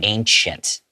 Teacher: the way that I pronounce it is I have like a CH sound